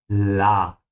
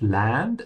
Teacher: Also notice that Land is pronounced with an open A.